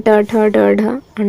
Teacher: मूर्धा में ट ठ ड ढ अण आता है